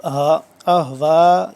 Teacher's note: हा सीने के पास से सीने के पास से और हलक के आखिरी हिस्से से